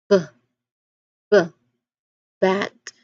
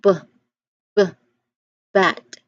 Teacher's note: you should feel a little buzz or vibration in your throat. So that's your vocal cords working. That's what makes it a voiced sound.